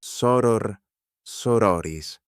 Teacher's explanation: The vowel before the final R is short in the nominative and long in every other case.